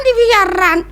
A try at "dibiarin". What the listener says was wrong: biarin. Dibiarin. Dibiarin, bukan dibiaran.